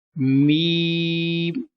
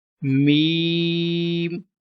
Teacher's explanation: Meme without taking sound into nose